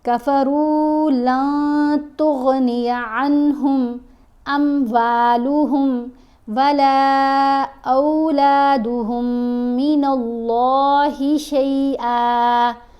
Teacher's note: اللہ کی لام کو موٹا پڑھیں گے